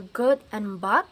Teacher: G is voiced because there is a vibration. · Block the airflow with the back of the tongue against the soft palate, so this is velar.